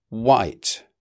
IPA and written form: waɪt (white)